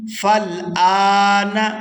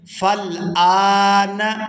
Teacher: یہاں حمزہ کے اوپر کھڑی زبر ہے تو اس کو کھینچ کر ادا کریں گے